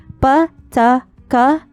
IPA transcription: p t k